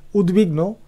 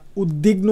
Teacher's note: দয়ের যে বফলা সেটি ওয়ার মতো উচ্চারণ হয়